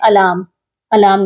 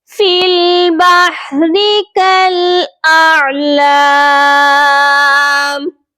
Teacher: حمزہ کی آواز الگ آئے گی، عین کی آواز الگ آئے گی، کلیئر ہونی چاہیے یہ آوازیں دونوں، فی البحر کالاعلام۔